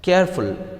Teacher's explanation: the root word is care here so the stress will fall on care